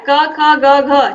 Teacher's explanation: इनका उच्चारण स्थान कंठ है